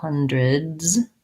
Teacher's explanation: I have first syllable stress, vowel schwa there, and then the E kind of says more of an I vowel, hundreds. D-R-I.